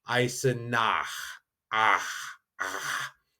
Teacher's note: And these are the combination CH and SCH. Now that CH kind of has that what we'd say a guttural sound, kind of in the back of your throat.